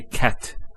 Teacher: the T doesn't have any vowel associated with it it's actually just a stop on the T so in this case we would actually put sukoon there cat